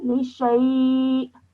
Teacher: with the hamza at the end, you have a slight jerk sound at the end